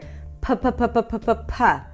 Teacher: P sound where you bring the lips together and release air